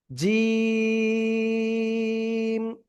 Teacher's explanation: জিহ্বার মধ্যখান তার বরাবর উপরে তালুর সাথে লাগিয়ে উচ্চারণ করতে হবে কি বললাম জিহ্বার মধ্যখান তার বরাবর উপরে তালুর সাথে লাগিয়ে এটা উচ্চারণ করতে হবে ঠিক আছে এক দুই তিন আলিফটা নিয়ে উচ্চারণ করব জিম শক্ত করে সবাই প্লিজ একসাথে জোরে জোরে উচ্চারণ করেন তো আলহামদুলিল্লাহ।